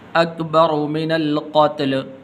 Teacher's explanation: را کے اوپر پیش ہے تو اس را کو پر کر کے پڑھیں گے